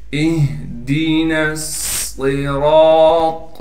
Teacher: طا کو موٹا پڑھیں گے، طا کو آگے لام سے ملا دیں گے · صاد کو موٹا کر کے پڑھنا ہے، را بھی موٹا پڑھا جائے گا، را کے بعد الف ہونے کی وجہ سے را کو ایک الف کی مقدار کھینچیں گے